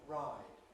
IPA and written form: raˑɪd (ride)